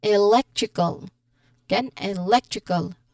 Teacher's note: it means the stress falls three syllables again three syllables from the end. So we say it as electrical again electrical or we focus on leg with stress on that particular syllable.